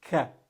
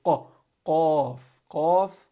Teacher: So English speakers, they will instead say ka, which is kind of the middle part of the tongue touching the roof of the mouth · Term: the K sound